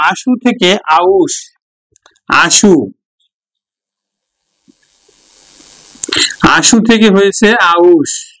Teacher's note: এই যে পরেরই কার যদি আগে উচ্চারিত হয় তখন তাকে বলি আমরা অপিনিহিতি